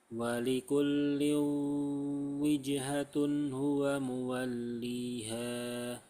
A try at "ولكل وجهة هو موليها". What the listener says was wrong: Coba masukkan ke hidung lagi.